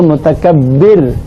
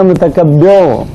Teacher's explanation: رکتے وقت متکبر بولیں گے، باریک